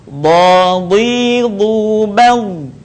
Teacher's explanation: Huruf ini keluar dengan menyentuhkan 2 sisi lisan kita dengan geraham-geraham atas. Boleh kita sentuhkan 2 sisi lidah dengan geraham-geraham atas, atau kita boleh menyentuhkan salah satu bagiannya. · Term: huruf dha